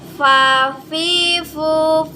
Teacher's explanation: ujung gigi seri ini bertemu dengan bibir bagian bawah